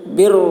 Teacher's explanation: رائے مشددہ کے اوپر دو پیش ہے اس وجہ سے را کو پر پڑھیں گے